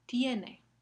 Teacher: en este caso la semivocal eh viene antes de la vocal normal